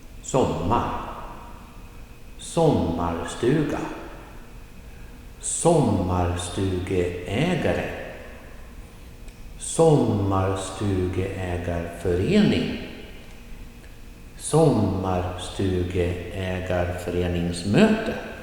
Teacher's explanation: And here the word becomes longer and longer and longer, but the pattern remains the same. Only 2 stress points. The first one at the beginning, falling tone, and then da-da-da-da-da, and then rising at the end.